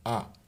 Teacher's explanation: Makhrajnya hamzah itu di akhir tenggorokan sama dengan ha, dan ringan cara bacanya. A, kita tinggal mangap saja a.